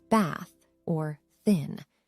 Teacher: the unvoiced th sound is produced without vibration as in the words bath or thin